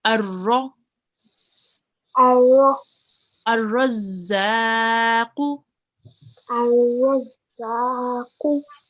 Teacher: We would just ignore this lam here. So straight from the alif, we would join the alif to the ra, okay, and ignore the lam. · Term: blank lam